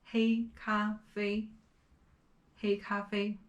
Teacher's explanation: all of these three characters have the first tone